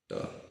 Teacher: ट वर्ग का उच्चारण होता है मूर्धा से